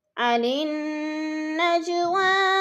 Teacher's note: عن النجوى، نون کے اوپر غنہ کرنا ہے، سختی سے جما کر پڑھنا ہے کیونکہ نون مشدد ہے، اور نج جیم پر قلقلہ ہے، اس کو ہلا کر پڑھیں گے۔ حروف قلقلہ یعنی حروف قلقلہ میں سے جیم ہے اور ساکن ہے تو اس کو ہلا کر پڑھنا ہے۔